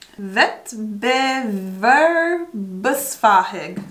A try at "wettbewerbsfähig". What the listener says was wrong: Not bad till the fähig. Wettbewerbsfähig.